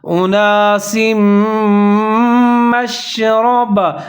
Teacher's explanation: ادغام کریں گے غنّے کے ساتھ، آواز کو 3 سے 4 سیکنڈ تک ناک میں لے جائیں گے